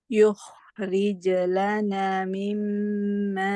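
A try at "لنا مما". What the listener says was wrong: Lana mim. Na panjang.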